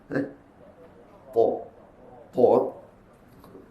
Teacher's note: Keluarnya pada hujung lidah menekan pada pangkal dua gigi kapak ataupun gigi kacip sebelah atas. Di situ letaknya huruf ta dan juga huruf ta.